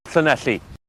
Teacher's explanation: the stressed open mid E in the second syllable is also split between E and A, so who knows, perhaps what happened wasn't so unusual.